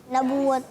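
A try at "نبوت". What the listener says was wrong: नबूवत नहीं, नून पर पेश है, ऐलाने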